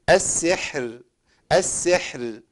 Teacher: كلمه السحر في القران اذا وقفت عليها في القران كله ترقق الراء